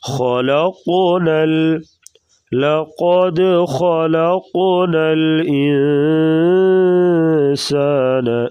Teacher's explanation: ہلا کر پڑھنے کو قلقلہ کہتے ہیں. لقد خلقنا، خا کو پور پڑھیں گے اور قاف کو پھر آگے قلقلہ کریں گے اور موٹا بھی کریں گے